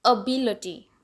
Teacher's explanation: first पे stress ना होके बी के ऊपर स्ट्रेस है